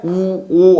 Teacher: 입술이 둥글게 돼야지만 나오는 소리죠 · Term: 원순